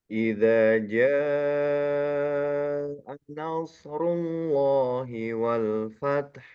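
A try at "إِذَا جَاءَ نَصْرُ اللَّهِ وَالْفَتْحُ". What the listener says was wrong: Oke, nunnya sedikit saya koreksi, nunnya lebih tipis lagi. Idza jaa nas baru masuk ke dalam shad. Idza jaa nasrullahi wal fath.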